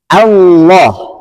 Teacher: Hamzahnya tipis, lamnya tebal karena lam jalalah.